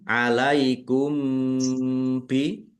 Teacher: mim sukun bertemu dengan huruf ba bacaan ikhfa safawi.